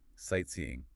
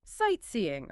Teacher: The stress is on the first part, sight.